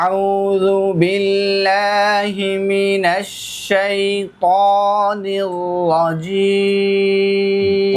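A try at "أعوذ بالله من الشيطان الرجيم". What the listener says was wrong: কটা আর একটু মোটা করতে হবে, হ্যাঁ?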